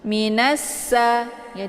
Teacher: ditekan nunnya masuk ke huruf sin atau bisa juga dikatakan dengan idgham syamsiyah karena ini sifatnya memasukkan ya, memasukkan bunyi nun ke dalam sin. Minassa ya, ditekan dulu nunnya.